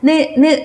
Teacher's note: 혀끝이 윗잇몸에 닿는 느 발음이 있었죠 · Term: 설음